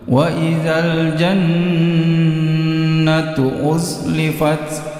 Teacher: Jadi perhatikan di sini nun tasjid, 3 ketukan. Ketukan keempat masuk pada tu.